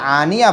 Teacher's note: مین جو پوائنٹ ہے آج کا، آنیہ، آنیتن تھا وہ، لیکن یہاں وقف کرنے کی وجہ سے آنیہ بن گیا۔ گول تا پر وقف کریں گے تو ہائے ساکینہ بن جاتی ہے، تا کی جگہ ہاں لگا دیں گے، حمزہ کھڑا زبر آ، نون زیر نی، یا ہا زبر یا، آنیہ۔